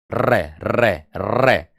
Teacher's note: जीभ की नोक वायु से रगड़ खाकर कापे गी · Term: लुंठित व्यंजन